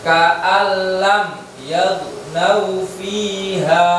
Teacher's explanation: Tapi nun sukunnya dimasukkan ke lamnya menjadi ka'al lam tanpa berdengung. Nggak boleh ka'al lam, tapi langsung ka'al lam.